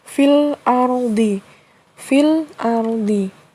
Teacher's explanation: hukum tajwidnya adalah Alif Lam Qomariah alif lam nya dibaca jelas